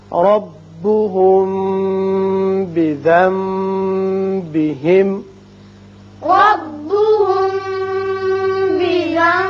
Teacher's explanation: یہاں نون ساکن کے بعد بار آ رہا ہے، یہاں اقلاب ہوگا. دونوں جگہ آپ آواز کو ایک الف کے برابر ٹھہرائیں گے.